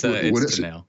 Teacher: it's emphasis on the second syllable.